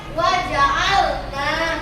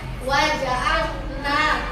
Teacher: Ini karena tidak ada lengkoannya, dia cuma 2 harkat panjangnya, itu dikatakan mat asli. Panjangnya cuma 2 harkat.